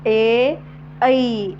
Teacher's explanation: यांचा उच्चार जे व्हायब्रेशन आहे ते कंठामध्ये होते ए ऐ आणि जिभेचा काय होतोय जिभेच व्हायब्रेशन मधा स्थिर राहून · व्हायब्रेशन कंठामध्ये होतोय पण जी जिभेची जी स्पर्शता आहे हलकीशी ती ताळूजवळ होत आहे म्हणून याला कंठतालव्य वर्ण असे म्हणतात कोणते आहेत दोन संयुक्त स्वर